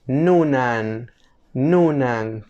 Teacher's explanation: la n en fonética se le conoce como una nasal alveolar Sonora